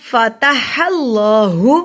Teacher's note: یہ ہا جو ہے فتح, یہ ہا پڑھا جائے گا اور اللہ کا نام جو ہے موٹا پڑھا جائے گا کیونکہ اللہ کے نام سے پہلے زبر ہے اس لیے موٹا پڑھیں گے.